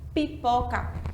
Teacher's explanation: a letra m a letra p e a letra B Elas têm os lábios aqui ó elas são bilabiais todas elas a gente bate os lábios